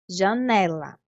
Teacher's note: a vogal da sílaba tônica, que no caso ela dá um pouquinho mais de tempo quando a gente pronuncia. Ela fica mais prolongada quando a gente fala a palavra em voz alta.